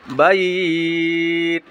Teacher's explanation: লিনের হরফের বামে ওয়াকফু হইলে এক আলিফ পরিমাণটা নিয়ে পড়িতে হয়